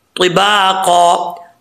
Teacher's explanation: तिबाका, यहाँ पे नून तनवीन का इख्फा हो रहा है, एक अलिफ की मकदार गुना करेंगे, आगे ता हरूफ़ मुस्तालिया में से पुर पढ़ा जाएगा